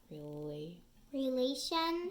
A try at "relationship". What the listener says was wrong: No, put the end on.